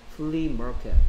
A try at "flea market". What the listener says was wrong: 얘는 이제야말로 F 발음은 flea market. 왜 L을 R처럼 발음합니까?